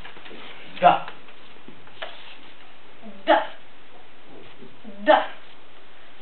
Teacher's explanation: La consonne D, par exemple, se prononce en tenant du bout de la langue sur les dents d'en haut.